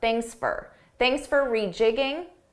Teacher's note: Notice how for sounded like an unstressed fur.